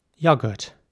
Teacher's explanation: spelled y-o-g-u-r-t and in British English it would be pronounced yogurt so once again the O is more like an uh sound